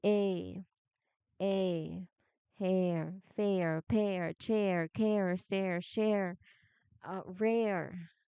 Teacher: If you feel your tongue moving from a tighter position to a softer one in the middle of your mouth, you've nailed the glide. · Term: relaxing glide